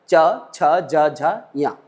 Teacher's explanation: से होते हुए निकलता है हवा उस क्षेत्र को हमारी जीवा हमारी जीभ जो है अपने आप वहां पर ऊपर वाले दांत के पिछले हिस्से पर पहुंच जाती है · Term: तालू स्थान